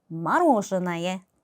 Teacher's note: 마찬가지로 여기 알파벳 O가 정말 많이 있죠. 그런데 이 두 번째 O의 강세가 있기 때문에 мороженое. 나머지 O 알파벳은 아 발음이 납니다.